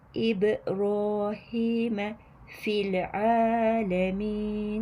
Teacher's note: Ayn harfimiz kesinlikle ince. A a sesi kalın değil. İnce bir a sesini veriyoruz. Alemin arız yaparak duruyoruz.